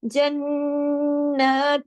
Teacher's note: अच्छा, जन्नत, अब ता 2 जेर 3 की तनवीन है, लेकिन उसके बाद ता आ रहा है, तो इस यहाँ पर हम इख्फा भी करेंगे। इख्फा के साथ हम छोटा गुन्ना करेंगे, सेकंड लेवल का गुन्ना कामिला।